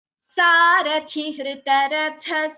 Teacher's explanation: Here please note the Mahapranas. Sarathi, thi is Mahaprana. Hritaratha, tha is Mahaprana.